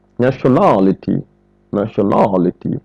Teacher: L'accent n'est pas mis sur le na. L'accent aussi n'est pas mis sur shun.